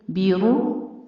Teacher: دونوں ہونٹ گول کر کے ضمہ سے ادا کریں گے اور را کو پر بھی پڑھیں گے